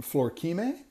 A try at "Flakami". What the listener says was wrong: Flakami. Oh, it's Flakami, the R silent.